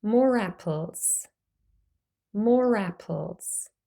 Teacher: More is now pronounced with a R, because the next sound is the vowel A.